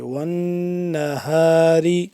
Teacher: نون مشدد پہ ہم کیا کریں گے، غنہ کریں گے یہاں پہ